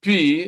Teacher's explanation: If you pronounce P, then watch the lips. You see that the two lips close, they come together, and then suddenly they are opened, and then the sound escapes with an explosion. So it's a bilabial because the two lips come together, and plosive because when there is a sudden release, then the sound escapes by force with a kind of explosion, if you like.